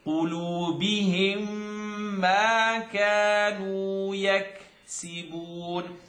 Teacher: Now mim shadda, full nasal sound